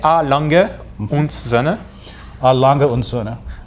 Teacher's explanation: The end is und in German, and the D is more pronounced like a T.